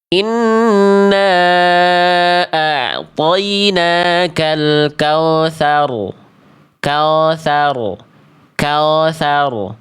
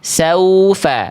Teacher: Enggak boleh ke vokal o. Nah, makanya sempurnakan domahnya ya. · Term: vokal u